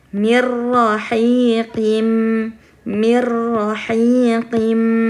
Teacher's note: Kemudian nun sukun bertemu ro, mirrahiqim, mirrahiqim. Jadi nun, suara nun hilang dan dimasukkan ke suara ro